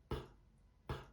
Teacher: Não tem som, não tem vibração aqui, tá?